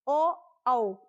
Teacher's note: जो ओ होता है उसका जो इस उच्चारण स्थान होता है वो होता है कंठोस्थ।